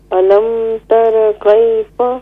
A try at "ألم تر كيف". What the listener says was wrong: را کو پر کیجیے فل ماؤتھ کیجیے. الم تر کیف